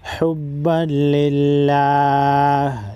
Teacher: لفظ اللہ کے لام کے نیچے زیر ہے، لفظ اللہ کو باریک پڑھیں گے۔